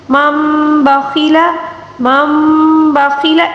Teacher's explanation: ساکن یا تنوین کے بعد جب بھی با آ جائے تو نون ساکن یا تنوین کو چھوٹی سی میم کے ساتھ تبدیل کر کے غنے کے ساتھ پڑھنا ہوگا ، اس کو اقلاب کا قاعدہ کہا جاتا ہے، ٹھیک ہے۔